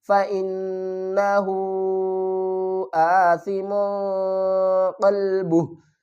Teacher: اخفا کسے کہتے ہیں، ہم نے میم تنوین کی آواز کو چھپا کر پڑھنا